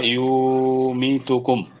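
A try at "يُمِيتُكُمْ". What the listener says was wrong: হয় নাই ভাইয়া। ইউটা ফাস্ট করতে হবে হরকত। মিটা লং করতে হবে। ইউ মি তুটা ফাস্ট করতে হবে। হ্যাঁ, তুকুম তুকুম তুকুম তুকুম।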